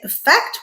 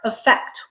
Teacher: It makes the I sound, okay? Or it can also make the schwa sound. So you can either say effect with the I or effect with the schwa sound, all right?